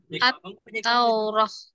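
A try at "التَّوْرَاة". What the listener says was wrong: Panjang rohnya. At-Taurah. Nah, panjang 2 atau 4 atau 6.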